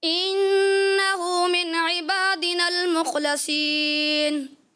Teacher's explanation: انہوں نے صاد کو مکمل پر نہیں کیا، جس کی وجہ سے ان کو 10 میں سے 9 نمبر دیے جائیں گے.